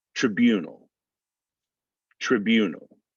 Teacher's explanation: the second syllable is stressed so we're not even really gonna get that i sound in there